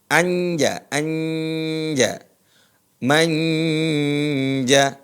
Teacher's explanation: nun itu diarahkan ke makhraj huruf jim jim di mana keluarnya Tengah lisan ketemu langit-langit jadi nunnya mengarah ke sana